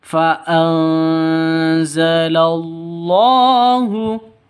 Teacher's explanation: Nun mati bertemu dengan za. Cara bacanya samar didengungkan, siap-siap ke huruf za-nya. Kenapa? Karena ikhfa hakiki.